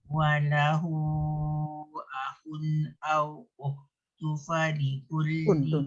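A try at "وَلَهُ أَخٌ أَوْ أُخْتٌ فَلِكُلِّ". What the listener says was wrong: Ifak tu. Dia tanwin jumpa fa. Ukhtun. Tun. Bunyi tun.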